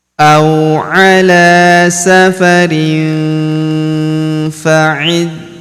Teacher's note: tanwin in huruf rin bertemu huruf fa maka tanwin innnya melebur ke huruf fa. Kita baca dengung dan samar. Dengungnya kita tahan dua sampai 3 harakat.